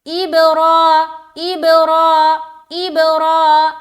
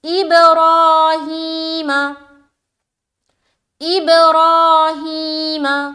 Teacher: را کو موٹا کرتے ہوئے کھینچیں گے، را، ہاں کو بھی کھینچیں گے، ہی، کیونکہ کھڑی زیر ہے